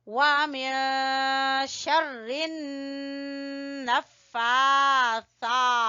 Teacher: इज़ा वक़ब वमिन शर्रिन नफ्फासा, यहाँ पे हम गुन्ना करेंगे, नून के ऊपर शद है इसलिए गुन्ना करना है।